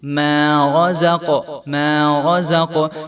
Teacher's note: کولو من طیبات ما رزقناکم، ما رزق، میم باریک حرف ہے، میم کو ایک الف کے برابر ہم لمبا کر کے پڑھیں گے کیونکہ میم کے آگے جو الف ہے یہ پڑھا جائے گا،